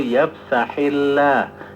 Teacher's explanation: Lafaz Allah ketika setelah kasrah maka tarkik tipis, bukan tafkhim.